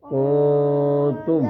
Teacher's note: اخفا کہتے ہیں کہ ہاں آدھی آواز نون کی ناک میں چھپے گی